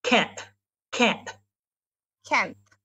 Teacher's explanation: a breath after that so I say Kent Kent Kent yeah there's like a little breathy sound there